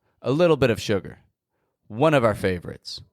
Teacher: And the F on the ending doesn't actually sound like an F. It sounds like a V.